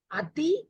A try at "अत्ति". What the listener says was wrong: अत्ति, there is double takara.